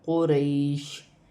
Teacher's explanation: وقف کی صورت میں 2 زیر کی تنوین گر جائے گی اور شین ساکن ہو جائے گا